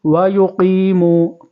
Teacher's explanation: قاف کو پر کریں گے